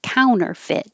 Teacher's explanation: You don't have to say the middle T because it comes after an N in the unstressed syllable, so it can disappear.